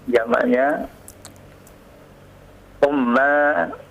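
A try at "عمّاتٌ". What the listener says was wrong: La. Itu antum ulang lagi kesalahan. Masa di dhammah? Ammatun.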